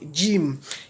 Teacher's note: Le milieu de la langue s'appuyant sur le milieu du palais fait ressortir la lettre Jim.